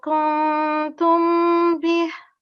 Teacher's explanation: If after noon sakin, if there's a haruful halki, then we do not do nasal sound. However, here ta is not a haruful halki, so we will do a slight nasal sound here